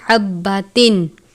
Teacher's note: باریک والی ہا ہے، حلق سے ادا کرتے ہیں، با کے اوپر تشدید کی علامت ہے، سختی سے پڑھیں گے حبتن۔